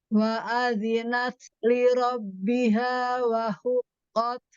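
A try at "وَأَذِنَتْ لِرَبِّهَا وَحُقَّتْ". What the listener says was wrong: Hu tipis, qaf tebal.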